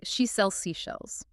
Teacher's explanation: connecting the Z and S sounds between the words to make it flow a little bit better. So you would say something like, she sells seashells.